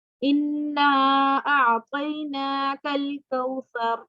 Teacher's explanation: हमजा क्या है, अलिफ के ऊपर जबर जेर पेश हो, तो हमजा से शुरू हो रहा है, तो इसको हम कितना लंबा करेंगे, इन्ना को 4 या 3 सेकंड के लिए। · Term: मद्दे जायज